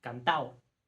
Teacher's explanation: en algunas variedades, la D en cantado puede desaparecer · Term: Elisión